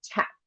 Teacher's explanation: The place is changed. So you front a palatal or velar consonant, so it moves to the front of your mouth. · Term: fronting